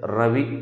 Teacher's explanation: తాడనం చేస్తుంది దంతమూలం వెళ్ళి, నాలుక కొనెళ్ళి దంతమూలాన్ని. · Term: తాడితం